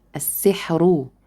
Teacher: the ra will be marked with dhamma, which means it has to be heavy, السحر. But if we stopped, we will have the case here that it will be sakina preceded by a second letter, and this second letter preceded by kasra.